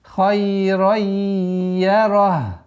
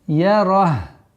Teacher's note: В конце «га» должно быть слышимо.